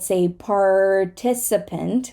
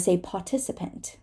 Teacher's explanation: we're going to say the r and a British person is going to skip the r